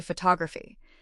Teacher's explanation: The stress moves to the second syllable. · But in photography, that first O turned into a schwa. It became ph.